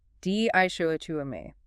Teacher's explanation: 4 syllables. Stress on the second.